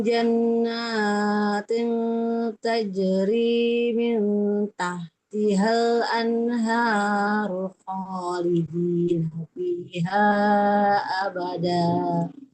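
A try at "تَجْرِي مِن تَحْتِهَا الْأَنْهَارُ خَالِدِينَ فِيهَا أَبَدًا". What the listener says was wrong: kepanjangan ibu dua harakat aja.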